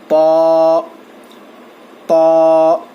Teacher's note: طا کو موٹا پڑھیں گے اور زبان کی نوک کو سامنے کے 2 دانتوں کے جڑ کو لگانے سے طا ادا ہوتا ہے